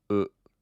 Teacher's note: a lot of people feel like it's similar to like the two o's you hear in the words like pool but it's not as long